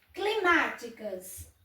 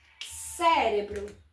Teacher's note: as duas palavras, a sílaba tônica é a antepenúltima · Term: proparoxítonas